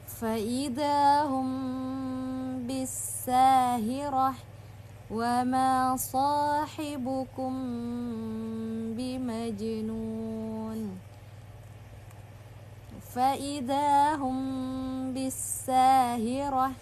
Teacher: sedikit ditahan sebanyak dua harakat pada kata mim sukun yang bertemu dengan huruf bah tersebut ya. Jadi dirapatkan atau cara yang kedua adalah memberikan rongga setipis atau seperti selembar kertas yang diletakkan di antara kedua bibir. · Fa'idahum bisahirah. Nah, jadi sedikit ditahan sebanyak 2 harokat pada kata mim sukun yang bertemu dengan huruf ba tersebut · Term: itbaq